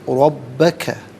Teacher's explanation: را پر زبر ہے، را کو پر کر کے پڑھیں گے، با مشدد ہے، جماؤں کے ساتھ پڑھیں گے، ربا علیحدہ ہے، کا علیحدہ ہے، ملا کر پڑھیں گے، ربک۔